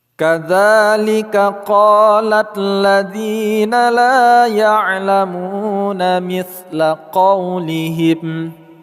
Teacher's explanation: Kadzalika dza panjang 2 harakat. Qala alladziina qa panjang 2 harakat, dzi juga panjang 2 harakat.